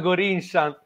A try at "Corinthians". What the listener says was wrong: Nella Corinthians, con la pronuncia in anglosassone, l'hai detto.